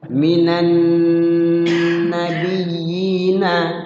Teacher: Nun bertasydid di situ. Tajibu gunnah, yaitu wajib gunnah. Artinya wajib di situ ditahan, digunnah, di nunnya digunakan.